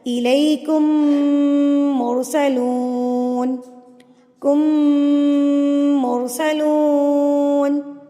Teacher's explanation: میم ساکن کے بعد اگر میم آ جائے تو میم کو غنہ کے ساتھ پڑھنا ہے. آپ نے اس کو ہم غنہ کے ساتھ پڑھیں گے، جیسے کہ الیکم، اس کو کہتے ہیں غنہ کرنا.